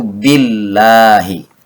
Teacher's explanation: berharakat kasrah dibacanya menjadi tipis atau tarqiq